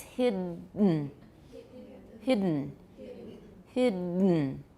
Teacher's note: nasal plosion occurs in English at the end at the ends of words such as hidden and sudden